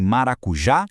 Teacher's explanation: A gente tem a oxítona com a tônica lá na última sílaba em maracujá